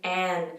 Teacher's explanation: it's a very nasally sound because basically like you're cutting off the sound from coming out your mouth and it's coming out of your nasal pharynx.